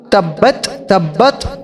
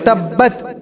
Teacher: تو تبت اس کے اندر آپ با کے اندر قلقلہ تو ضرور کریں گے لیکن اس کے اندر آپ تبت تبت ایسے نہیں کریں گے بلکہ تبت تا کو بالکل باریک کر دیں گے کیونکہ تا باریک حرف ہے